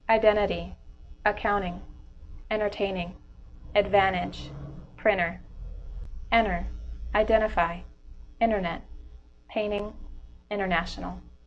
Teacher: drop the T after n